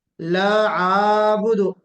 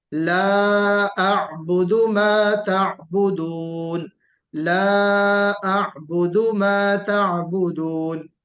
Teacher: फिर ला अअबुदु, इसमें भी मद है, मद मुनफसिल है। और अअबुदु में थोड़ा पहले हमजा है फिर आइन है। बाद हजरात को पढ़ते हुए सुना जाता है ला अअबुदु, ला आबुदु, थोड़ा सा मद भी लग जाता है, तो उसका हमें ख्याल करना है।